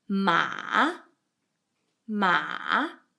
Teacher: the third tone is like going down the hills and going up again. It's like a roller coaster.